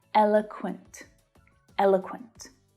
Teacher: So the first syllable is stressed and the other two reduce down to become the schwa sound.